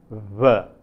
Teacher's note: a distinct sound, namely v, a bilabial fricative